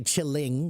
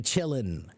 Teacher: We take the G off. Okay, in slang words, many times the ing will become in, just in, no G